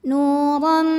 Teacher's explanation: Berikutnya ada hukum idgham bi gunnah karena ada tanwin fathah menghadapi huruf mim. Maka tanwinnya masuk ke mim, nuram disertai bunyi dengung M. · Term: idamunah